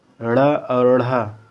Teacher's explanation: तो दोस्तों यही बताया जा रहा है कि जीभ पहले ऊपर उठकर मूर्धा को स्पर्श करे और फिर झटके के साथ जो है नीचे को आ जाए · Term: उच्छिप्त व्यंजन